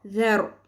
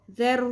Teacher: ذال نرمی سے ادا ہوگا، را پر ہوگا